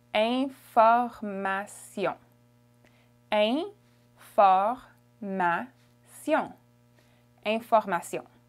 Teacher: So the beginning is a nasal, it's ain. And the last sound is also a nasal, it's on.